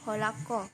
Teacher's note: Contoh yaitu dalam bahasa Batak Toba, kata holan ho, hanya kau, diucapkan holako. Bunyi N pada holan dan bunyi H pada ho saling disesuaikan atau diasimilasikan menjadi K.